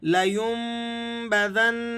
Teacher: لینبذن، نون کو نہیں کھینچیں گے آپ